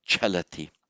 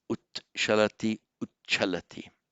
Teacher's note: So ut, you by santi, wherever you get to t, followed by sh, by santi it mutates to a double ch, double aspirated